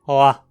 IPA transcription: ʕa